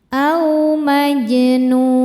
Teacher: A maj jimnya hukumnya qalqalah sugro karena jimnya sudah sukun asli dan berada di tengah bacaan. Dibacanya memantul pantulannya kecil. Au majnun saat berhenti di nun hukumnya adalah mad arid lukun.